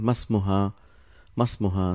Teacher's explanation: hamzatul wasl, so you don't pronounce it